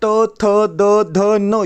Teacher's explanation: जिनका उच्चारण ऊपर के दांतों पर जीभ लगने से होता है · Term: दंत व्यंजन